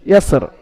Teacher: ইয়াসরির জায়গায় এখানে আপনি আয়াতের শেষে থামতেন, রকে সাকিন করে পড়তে হবে, রর নিচে জেরকে সাকিন করে পড়তে হবে, ইয়াসর।